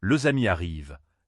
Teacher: Ce serait sacadé, presque mécanique, mais avec la liaison, cela devient le amis arrivent et tout s'enchaîne naturellement